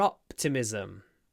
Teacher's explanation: Now the stress is on the first syllable.